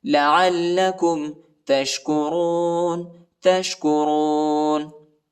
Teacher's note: عین کو لام کے ساتھ ملائیں گے، لام کو سختی کے ساتھ پڑھنا ہے، شدت کے ساتھ پڑھنا ہے